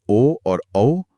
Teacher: ओ और औ कंठ और होठों से, औदौतो कंठोष्ठम।